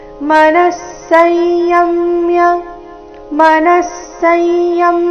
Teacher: ವಿಸರ್ಗದ ಉಚ್ಚಾರಣೆ ಇಲ್ಲಿ ಅರ್ಧ ಸ ರೀತಿ ಮುಂದಿನ ಶಬ್ದ ಸ ದಿಂದ ಪ್ರಾರಂಭವಾದ ಕಾರಣ